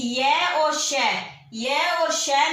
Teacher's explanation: य और श में जो आवाज निकलती है वो तालु से निकलती है